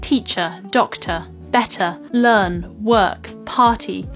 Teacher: other examples of this non-rotic are where the r sound is dropped off and replaced with just a vowel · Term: non-rhotic R